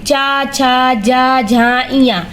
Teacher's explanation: तालु की सहायता से बोले जाते हैं।